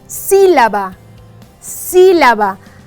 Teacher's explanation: aquí la sílaba tónica es la sí